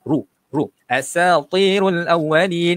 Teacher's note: Ra berbaris hadapan, jadi bacaannya ialah tebal.